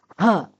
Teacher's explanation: حلق کے آخری حصے سے ادا ہوگا، آواز ہے ہ۔